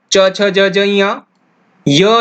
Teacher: इन सब का उच्चारण स्थान तालु होता है